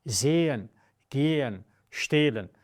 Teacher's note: The H very often coming after a vowel is muted, but simply makes the vowel longer.